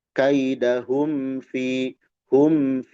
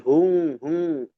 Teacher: mim sukun menghadapi fa izhar syafawi dibaca jelas